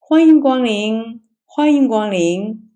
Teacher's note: usually she will say welcome with a rising tone and repeat it twice